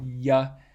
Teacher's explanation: you can feel that there's a cool spot on your palate that's a little bit further back from the one you get from shh